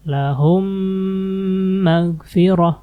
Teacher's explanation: mim sukun ketemu mim mim lagi jadi ditahan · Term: idgham Mimi, idgham mimi